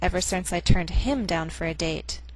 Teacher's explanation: The stress on him means that I'm talking about Peter and not Dan and not anybody else.